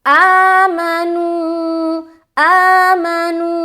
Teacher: آ کی جو آواز ہے نا اوپر جا رہی نا, اپ جا رہی, ماں کی بھی آواز اوپر جائے گی, لیکن فرق کیا ہے, آ کو ہم ذرا کھینچ کے پڑھ رہے, میم کو ہم ذرا جلد ادا کر رہے. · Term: آواز کی جو اتار چڑھاؤ